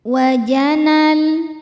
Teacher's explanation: Namun ketika diteruskan wajanal, na-nya jadi pendek, alifnya gugur karena ada proses namanya takhallus bil hadfi.